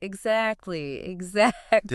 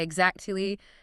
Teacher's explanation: It's almost like the T disappears, but there is a sharp stop in the air where the T used to be. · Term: glottal stop